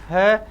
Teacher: जैसे ही परीक्षा में आपको पेपर में मिले कि है वर्ण से उच्चारण स्थानम किम, तो आप देखो है को बोलो, है, आपको खुद फील हो जाएगा कि हाँ है को बोलने से मुझे कंठ में वाइब्रेशन हो रहा है